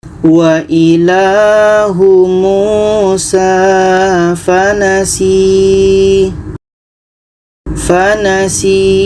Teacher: si ini kita panjangkan dua harakat karena ada ya mati sebelumnya ada huruf yang berbaris di bawah